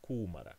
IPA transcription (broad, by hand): kuːmara